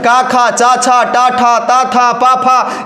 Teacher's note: सब के सब अघोष हैं। 5 वर्ण का पहला और दूसरा अक्षर अघोष होता है।